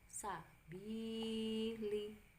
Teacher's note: jadi bi-nya panjang 2 harokat